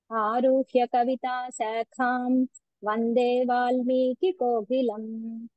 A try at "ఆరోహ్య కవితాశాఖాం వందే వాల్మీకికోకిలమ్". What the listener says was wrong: first time చెప్పినప్పుడు మీరు రూపు దీర్ఘం ఇచ్చారు సెకండ్ టైం మీరు కరెక్ట్ చేశారు